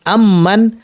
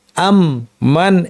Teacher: মিমের সাথে মিম আসলে দুইটা মিমকে, যেমন আম্মান, এখানে আম মান একটা মিম শেষ করে নতুন করে একটা মিম শুরু করা হয় না। বরং দুইটা মিমকে একসাথ করে তাসদিদ যদি একটি মিম বানিয়ে লম্বা গুণনা করে পড়া হয়। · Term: ইদগাম